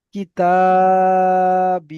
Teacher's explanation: কিতা, কাফ জের কি, তা আলিফ জাবার তা, কিতা, বা ইয়া জের বি। তাহলে এই তা টান হবে এবং বি টান হবে, আলিফ মাদ্দা রয়েছে এবং ইয়া মাদ্দা রয়েছে, আর দুটো একই টান হবে